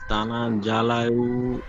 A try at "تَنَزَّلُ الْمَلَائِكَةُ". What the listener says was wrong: তানা জালাল বলছেন, জালাল হবে না, জালুল। লাম লাম পেশ লুল উচ্চারণ হয়। তানাজ্জালুল